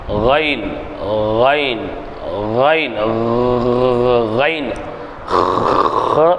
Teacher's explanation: கைன் தொண்டையின் ஆரம்ப பாகத்தில் உச்சரித்தல் தொண்டை தொண்டையிலிருந்து வரும் இதுக்கு நாக்குக்கு சம்பந்தம் இல்லை